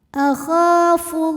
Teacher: Lam pada lafaz Allah dibunyikan secara tafkhim karena huruf sebelumnya berbaris dhammah, maka dibacanya tebal.